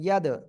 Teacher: দাল কলকলার অক্ষর সাকিন অবস্থায় রয়েছে ধাক্কা দিয়ে পড়তে হবে